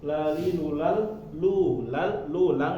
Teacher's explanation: lual lu Lal lulang ya masuk ke huruf lam maka itu dibacanya idgham bila guna langsung masuk ya tanpa dibaca dengungnya